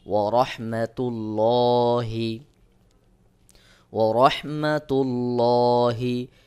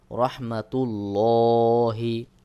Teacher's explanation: আর এখানে দেখুন তার উপরে পেশ রয়েছে, যদি আল্লাহ শব্দের লামের আগের হরফে পেশ বা জবর থাকে তাহলে এখানে মোটা বা পোর করে পড়তে হয়। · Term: মোটা করে